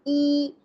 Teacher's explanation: Your lips slightly spread, mouth slightly open, tongue near the front. · the E sound is a long front vowel sound. It is clear, stretched, and commonly used in English pronunciation.